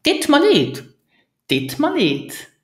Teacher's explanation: So first we drop the first word, so ut, we just drop it. And then we use the weak form of mir, so you hear ma, ma in the middle.